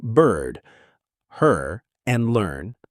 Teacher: We keep that R coloring and it actually merges with the vowel to create an entirely new sound. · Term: R colored vowels